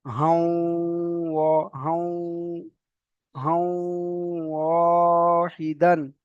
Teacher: তানবিনের পরে ওয়াও এসেছে, তো এখানে এই তানবিনটা আসার কারণে এখানে ওয়াওটাকে কি করতে হবে, একটু গুণনা করে পড়তে হবে।